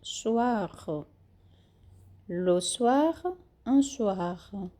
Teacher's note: Soir, a gente fala o R e o O bem sutil, bem rápido, bem suave, quase não pronunciado.